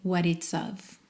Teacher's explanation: essa preposiçãozinha, o f, sempre com som de v ao invés de f